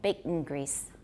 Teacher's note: I've got a syllabic nasal, I've got a glottal stop in there